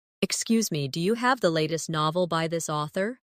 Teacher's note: In casual speech, do you often sounds like dia